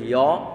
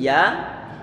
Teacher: Biar nanti tidak terdengar yo, maka mulut perlu untuk dibuka. Biar nanti mendapatkan suara fathah yang sempurna.